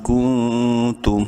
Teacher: नून साकिन के बाद ता हुरूफ हल्की में से नहीं है, इस नून में भी इख्फा करेंगे।